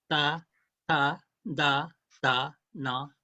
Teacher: in Nepali, ta, ta, da, da, you put the tip of the tongue in between the teeth.